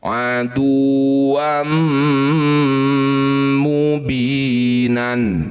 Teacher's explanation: Disebut bacaan idgham bighunah. Bunyi fathah tanwinnya masuk pada mim. Dengungkan dua harakat. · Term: idgham bi gunnah